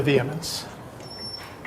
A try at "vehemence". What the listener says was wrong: The H is silent.